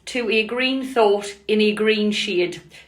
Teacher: Imagine we have got the poetic lines, to a green thought in a green shade. To a and in a are the Pyrrhic because they are unstressed, and the stress and the emphasis falls on the idea of the green thought